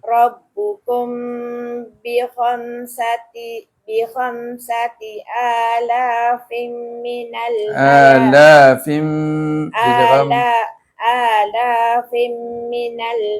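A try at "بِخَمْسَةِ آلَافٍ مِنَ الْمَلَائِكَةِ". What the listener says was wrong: Dengar tanwin bertemu dengan huruf apa tu? Dengung idgham al-ghunnah. Idgham al-ghunnah tadi lah tak dengar tu.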